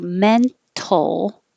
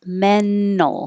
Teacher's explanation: you can say with the t or without the t so you can say men tol or skip the t menol · you can say men tol or skip the t menol because your tongue is going to the n and t position which is the same position